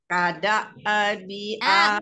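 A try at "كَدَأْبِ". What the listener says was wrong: Enggak boleh mantul. Habiskan nafasnya. Kada bi.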